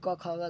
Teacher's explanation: क ख ग से लेकर अ तक ये कंठ है यानी कंठ से बोला जाएगा इसलिए इसे कंठे कहते हैं यानी क से लेकर अन तक